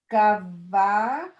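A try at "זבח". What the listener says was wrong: Good, but you're right, except it's not a ga. Yeah, that's right.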